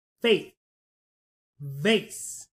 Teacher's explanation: my teeth were biting the bottom of my lip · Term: V and F sound